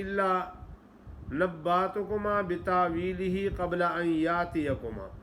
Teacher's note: حمزہ ایک جگہ بھی نہیں پڑھا جاتا، سارے ہی الف پڑھے جاتے ہیں